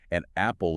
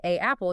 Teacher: Because if you try to say A apple, your vocal cords have to do this clunky stop and start motion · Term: glottal stop